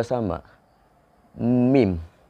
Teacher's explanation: kedua dari pengucapan assyafatain ini disebut dengan as-saffatain artinya dua bibir dua bibir bibir atas dan bibir bawah bertemu huruf-huruf yang keluar dari makhraj as syafatain yaitu huruf ba dan mim